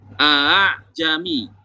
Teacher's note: jadi hamzah yang keduanya dibaca ringan, dibaca antara hamzah dan suara alif. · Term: tashil